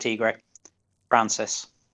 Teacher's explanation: there's not much of a difference between the e in francis and france's the the schwa sound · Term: northern accent